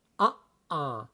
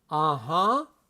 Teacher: If you have that glottal stop, uh-uh is no. Uh-huh, it's fluid. It doesn't stop. Uh-huh is yes.